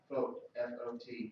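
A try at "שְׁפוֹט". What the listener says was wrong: It has a holum over it, so it's not a consonant. It has a dot over the pay. That's a holum.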